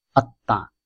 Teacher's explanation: নিয়মে বলা হয়েছে পদের মধ্যে বা অন্তে মফলা সংযুক্ত বর্ণের দ্বিত্ব উচ্চারণ হয়। ম ধ্বনিটি আনুনাসিক হওয়ায় দ্বিত্ব উচ্চারিত হওয়ার পরে শেষ ধ্বনিটি সাধারণত সামান্য নাসিক্য প্রভাবিত হয়। যেহেতু সামান্য নাসিক্য প্রভাবিত হয়, সেজন্য শেষের ত বর্ণের আকারের উপরে চন্দ্রবিন্দু ব্যবহার করা হয়েছে, আত্মা।